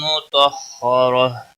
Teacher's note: تو کو موٹا پڑھیں گے اور را کے اوپر بھی زبر ہے، اس زبر کی وجہ سے را کو بھی موٹا پڑھیں گے